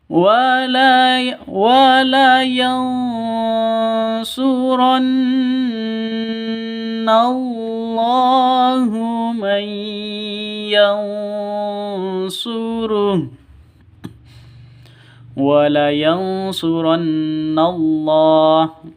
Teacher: Nun mati atau nun sukun bertemu dengan shad. Samar, didengungkan, siap-siap ke huruf shadnya. Ikhfa hakiki, ya.